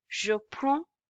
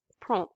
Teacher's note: The pronunciation here is prends. Okay. We are not pronouncing the ds at the end.